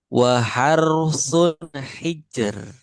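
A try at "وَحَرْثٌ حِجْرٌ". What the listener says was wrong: Nah, yang ro pertama justru yang kurang tebal. Waharu, waharu. Kalau yang kedua sudah tipis. Waharu. Waharu. Waharusun hijr. Nah, yang terakhir roknya sukun karena wakaf.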